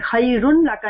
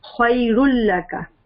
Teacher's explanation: ادغام غنہ کے ساتھ نہیں ہوگا، غنہ کے بغیر ہوگا. ٹھیک ہے، لام اور را پہ ادغام مرج کرتے ہیں لیکن غنہ نہیں کرتے. خیر لک بولیں گے، خیر نہیں بولیں گے، خیر لک.